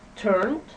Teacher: shh show okay so you feel the vibration in your throat for those verbs with The Voice ending the Ed is pronounced d